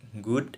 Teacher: Memblokir aliran udara dengan bagian belakang lidah menghadap langit-langit lunak.